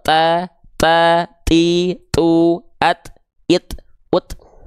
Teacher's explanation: huruf t di sini dia bukan mengalir nafas tapi dia hanya berupa percikan-percikan nafas saja